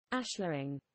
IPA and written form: ˈæʃlərɪŋ (ashlaring)